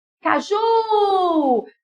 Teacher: Caju a sílaba tônica é Ju é uma oxítona